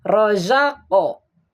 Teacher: sugro harus ada pentalan k ini nih rozaqo Nah itu pentalannya rozaqo kan disukun tapi seperti ada harakat gitu